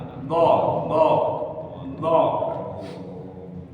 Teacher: jadi lidah ini Pak berada di sisi gigi kita geraham. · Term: makhraj do